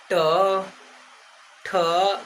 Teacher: ट बोलिएगा तो जीभ कर्व हो जाएगी, मतलब गोल घूमेगी और निचले भाग में टच करेगी। जैसे ट ऊपर जाएगी बट जीभ जो है गोल घूम जाएगी। · बट हम लोग ट का प्रयोग करेंगे तो जीभ जो होगी वो याद रखिएगा कर्व हो जाएगी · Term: मूर्धा